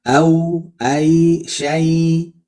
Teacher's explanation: au itu harful lin aja, tapi rokhwah, mengalir.